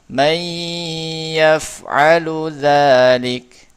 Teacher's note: dimasukkan huruf nun sukunnya kepada huruf ya, tapi masih disertai dengan gunnah yang dipanjangkan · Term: idgham bi gunnah